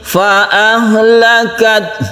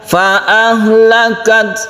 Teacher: huruf H ini di pangkal tenggorokan, jadi ketika kita membaca sukun ta, kita sudah mensukun H itu bersamaan dengan ta tersebut sehingga kita menempatkan makhraj dari H tersebut di pangkal tenggorokan.